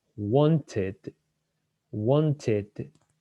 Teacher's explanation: It's the id, because the verb want finishes with a T, so we need the id